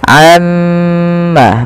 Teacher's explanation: Nah, ini jangan kita langsung baca amma yatasaalun, tapi tahan dahulu gunnahnya atau bunyi suara mimnya sepanjang 2 harokat